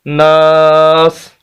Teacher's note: جیسے ہم اس کو ساکن کریں گے تو اس کی پیش ختم ہو جائے گی اور ہمارا وقف ہو جائے گا یصدر الناس سے ناس، پیش نہیں پڑا جائے گی، سین ساکن ہو جائے گا۔